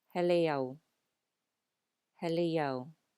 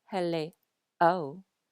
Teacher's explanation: Do you hear the glide between the end of hele and o? It's not hele o because o does not have an okina.